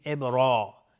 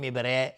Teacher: الف هم تابع را مفخم میشه، میگیم ابرا، نمیگیم ابره، ابرا.